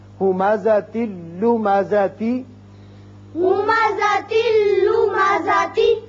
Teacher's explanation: تا کے نیچے ایک زیر پڑا جائے گا اور یہ لام سے ملے گا، نون کی آواز نہیں آئے گی۔ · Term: ادغام بغیر غنہ